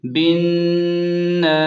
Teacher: نون الف زبر ن، یہاں نون پر تشدید ہے، اس لیے ناک میں آواز کو تھوڑی دیر روکیں، یعنی غنہ کریں۔